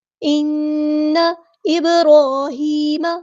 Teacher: با ساکن پہ کلکلا ہو رہا ہے